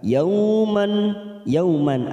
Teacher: ada fathah tanwin pada huruf mim bertemu hamzah, namanya idhar halqi, kita baca jelas tanpa mendengung